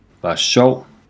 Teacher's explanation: The end of the second word seems to vanish.